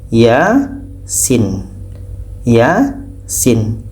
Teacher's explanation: Di sini sebetulnya ada alif kecil, tapi tidak dinampakkan. Ya, ini panjang 2 harokat, sedangkan sin 6 harokat.